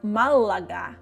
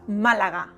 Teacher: The L is quick. Not “Mallagha”, but Málaga, quick.